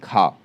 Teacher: तो अघोष महाप्राण ध्वनि है खा